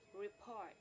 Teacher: the first syllable is unstressed or light and the second syllable is heavy or stressed